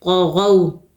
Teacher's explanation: طا کو موٹا کریں گے، حروف مستعلیہ میں سے ہے، غو میں واو لین ہے، واو ساکن سے پہلے جب زبر ہوتی ہے تو واو لین ہوتا ہے، نرمی اور جلدی کے ساتھ پڑھیں گے. طغوا ایسے نہیں پڑھنا، غلط ہوگا، بلکہ جلدی سے پڑھنا ہے.